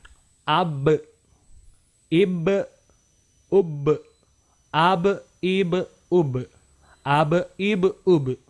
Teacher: Nah huruf ba ini juga termasuk huruf qalqalah. Maka ketika dia berharokat sukun harus dipantulkan.